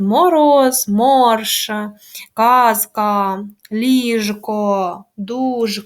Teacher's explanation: дзвінкі приголосні звуки в нас в кінці складу оглушувати не можна Їх вимовляють чітко